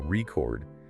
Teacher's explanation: If you stress the first syllable record, it's a noun, like a vinyl record, right?